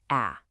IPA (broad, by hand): æ